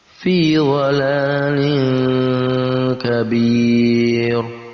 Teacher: tanwin bertemu dengan kaf. Kaf juga salah satu huruf ikhfa, maka kita baca dengan disamarkan, dengan ditambahkan huruf eng.